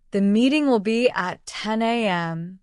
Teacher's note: The stress on meeting is a clue that it's important.